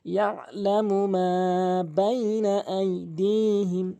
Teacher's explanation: এখানে মা অবশ্যই ১ আলিফ টানবেন, ১ আলিফ পরিমাণ ২ সেকেন্ড পরিমাণ